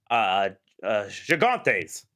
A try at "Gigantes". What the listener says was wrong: Yeah, but still wrong. Gigantes. Yes, like Jorge. the G, the first G is soft. Yeah, Gigantes.